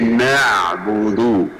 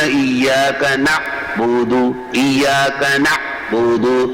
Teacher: عین کے اندر صفت توسط ہے جس کا معنی ہے کچھ نرمی کچھ شدت، کچھ آواز بند ہوتی ہے کچھ آواز جاری ہوتی ہے